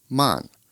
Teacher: that's pronounced with a fourth falling tone